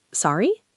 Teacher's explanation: When a British person says, Sorry? with a rising intonation, they usually mean, I didn't hear you. Could you repeat that?